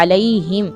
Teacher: ہا کو کیا کرنا ہے؟ حلق سے نکالنا ہے